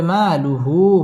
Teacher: মা মধ্যে তাবাঈ এক আলিফ টেনে পড়তে হবে